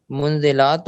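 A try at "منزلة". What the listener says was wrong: لام کو لمبا نہیں کرنا.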